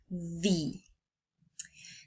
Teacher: you use the combination between the airflow that you let go and the vibration for your vocal cords. So it is necessary that the vocal cords move and let airflow goes in order to produce this sound. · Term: voiced